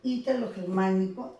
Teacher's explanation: El mayor énfasis o tono recae en la sílaba I, en la primera, ¿no? Lleva tilde por ser esdrújula, igual germánico, ¿no?